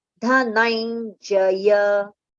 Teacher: Na will have little slight pronunciation of nasal nya.